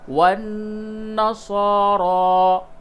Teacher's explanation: نون مشدد ہے یعنی نون پہ تشدید ہے، غنہ کریں گے